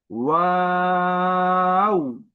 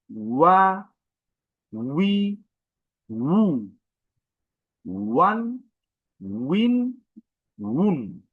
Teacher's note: আমি ঠোঁট গোল করেছি তবে একদম বন্ধ হয়ে যায়নি।